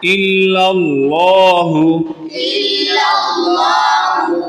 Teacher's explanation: الا اللہ میں اللہ کا لام اس لیے پر پڑھا جائے گا کہ اللہ کے لام سے پہلے پچھلے لام پر زبر ہے